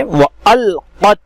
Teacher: लाम पर चूंकि सुकून है, सुकून होने की वजह से हमजा को लाम में मिलाएंगे, और हमजा साकिना के पढ़ने में चूंकि झटका होता है इसलिए झटके के साथ इसको अदा करेंगे।